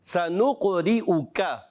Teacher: را کے نیچے زیر ہے، باریک پڑھیں گے، حمزہ کو خوب واضح کریں گے